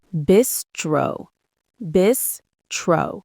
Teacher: Two syllables. Stress on the first. The S sound is like a Z sound.